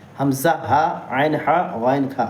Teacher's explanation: شروع حلق سے جو سینے کی جانب ہے، ٹھیک ہے، حمزہ، ہا، اور درمیان حلق سے عین، حا، اور آخر حلق سے غین، خا ادا ہوتے ہیں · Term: حروف حلقی